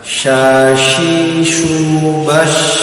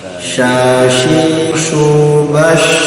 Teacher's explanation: Ini shin yang titik 3 keluar dari tengah lidah.